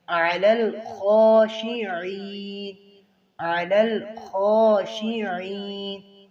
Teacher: ہوگا لَكَبِيرَةٌ إِلَّا یہاں پر اظہار ہو رہا ہے عَلَى الْخَاشِعِينَ عین کو واضح کریں اور خا کو پر کریں موٹا کریں اسے